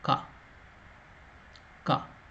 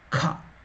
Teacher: So we are using less energy. The same consonant has another format, that is Mahaprana. You use more energy, more lung power. So it will come with the more lung power.